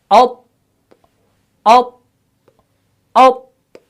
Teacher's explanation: आवाज बंद होगी, ठीक है, फौरन बंद होगी, सख्ती पैदा होगी, शिद्दत पैदा होगी।